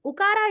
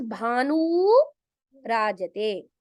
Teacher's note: Ukara, instead of hrasva ukara, it becomes dirgha ukara.